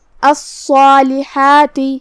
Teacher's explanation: مد اپنے پیچھے والے حرف کا حکم لیتا ہے تفخیم اور ترقیق میں، تو ہم یہاں حرف الصاد کو اور مد کو دونوں کو تفخیم سے ادا کریں گے